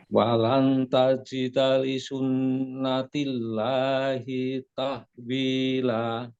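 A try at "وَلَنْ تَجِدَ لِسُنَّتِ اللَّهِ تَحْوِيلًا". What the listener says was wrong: Pak, tadi sedikit lagi Pak, ikhfanya untuk lan. Wala tajidalisun. Panjangnya sama tuh yang guna itu dengan ikhfa. Panjang.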